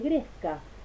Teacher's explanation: el ejemplo de gresca, que va con una oclusiva dorsopalatal sonora por efecto de la E, que es una vocal palatal, aunque estos dos sonidos no estén pegados.